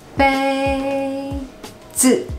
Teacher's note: The second word is neutral, so it just drops.